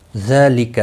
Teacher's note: ذال کے اوپر کھڑی زبر ہے، ایک الف کے برابر کھینچ کر پڑھیں گے، لکا کو کھینچنا نہیں، کسی بھی حرکت والے حرف کو کھینچتے نہیں۔